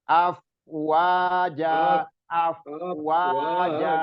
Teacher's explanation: Ingat di afnya nggak memantul, jadi af ngalir rokhawah.